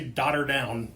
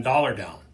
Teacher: I'll bet you it's easier to say daughter down than dollar down. The dollar down falls apart because the T sound rolls off the tongue where the L sound doesn't.